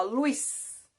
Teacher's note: Porque eu tenho o U, ele é semivogal e o I é vogal. Então, na verdade, aqui eu tenho um ditongo, certo? Um encontro vocálico, que é um ditongo.